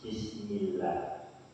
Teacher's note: kalau bismillah itu membacanya takrib, dibaca tipis